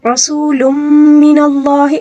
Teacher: جائے تو اس میں ادغام مع الغنہ ہوتا ہے، ٹھیک ہے، یعنی ہم نے ملا کر غنے کے ساتھ پڑھنا ہوگا